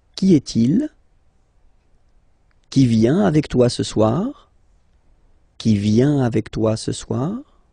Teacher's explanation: If you pronounce them normally, remember that you will have to raise your voice a little bit at the end of the question